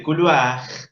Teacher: Anoten eso por las dudas porque seguramente va a aparecer una R final y quiero que constaten que cuanto les digo condice o no. En el caso de couloir, la R es gutural porque tiene antes un diptongo.